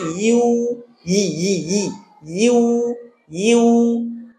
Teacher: ইউতে টান আছে এবং এটাও জিহ্বার মধ্যখান থেকে